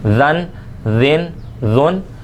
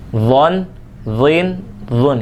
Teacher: ذال بغیر سیٹی والا حرف ہے لیکن باریک ہے، لیکن ضا بغیر سیٹی والا حرف ہونے کے ساتھ ساتھ یہ موٹا حرف ہے، تو اس کے اندر یہ تلفظ کے اندر ہم نے اس کا تلفظ ادائیگی اور جو مخرج ہے اس کو دھیان میں رکھتے ہوئے پڑھنا ہے۔